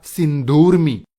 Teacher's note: जैसे सिंधु प्लस उर्मी, उर्मी कहते हैं लहर तरंग को। तो दोनों ऊ मिलकर दीर्घ ऊ बनेगा सिंधुर्मी। इसी प्रकार यदि पहले शब्द के अंत में दीर्घ ऊ हो और दूसरे शब्द के शुरू में ह्रस्व ऊ हो, तो दोनों मिलकर दीर्घ ऊ बनाएंगे।